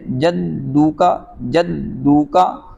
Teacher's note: اگر کوئی اس کو کھینچ لیتا ہے جدو کا یا جدو کا پڑھتا ہے، جدو کا پڑھیں گے تو معنی تبدیل نہیں ہوگا، جدو کا پڑھیں گے یعنی کھینچ دیں گے تو پھر معنی تبدیل ہو جائے گا۔ پیش کو دونوں ہونٹ گول کر کے پڑھا جائے گا اور کھینچا نہیں جائے گا۔